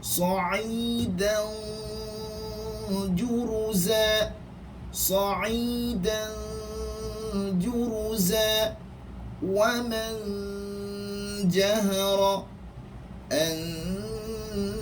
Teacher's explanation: lidah hampir kepada huruf jim dan kebanyakan suara keluar pada hidung. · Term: ikhfa